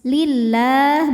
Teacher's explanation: Lam jalalah dibunyikan secara tarqiq sebab huruf sebelumnya berbaris kasrah, maka dibacanya tipis. Lillah bunyinya lah ya.